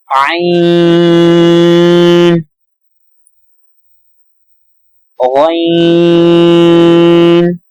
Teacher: عین کو ادا کرتے وقت گلے سے آواز نکلتی ہے، عین کا مخرج گلا ہے تو اس کو بھی احتیاط کے ساتھ ادا کریں گے۔